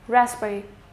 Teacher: Now in these type of words, we have the example of raspberry. Now in raspberry, I'm not going to pronounce this P. It is just going to be ras and then it's going to be berry, raspberry.